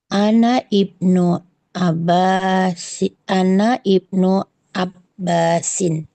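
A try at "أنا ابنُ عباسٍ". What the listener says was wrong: Ana banu Abbasin. Ana ana ban ana banu. Nah, ini hamzatul wasalnya dia tidak dibaca. ya karena dia bukan di awal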